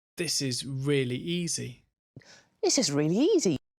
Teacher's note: just make sure you keep the stress on the really and the beginning of the adjective